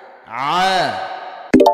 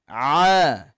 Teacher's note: Huruf ain ni lebih kepit sikit daripada huruf ha.